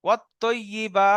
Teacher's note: শুধু বা টান হবে, বাকি কোনো জায়গায় টান নেই